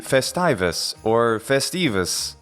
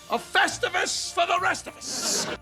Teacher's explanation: The E is a long vowel sound, and frequently, though not consistently, English terms, taken directly from Latin, preserve the accent. As the accent falls on the E in Latin, it should also in English, and be festivus or festivus.